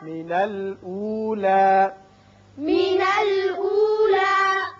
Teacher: اب یہاں وقت کی صورت میں لا الف کے برابر آواز رہے گی، لمبا نہیں کریں گے